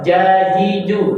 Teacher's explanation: Ujung lidah dengan gigi bagian bawah. Kalau jajiju, tengah lidah nempel. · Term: huruf jim